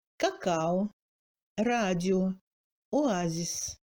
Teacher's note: Dans certains mots empruntés, le O ne se réduit pas et se prononce comme O.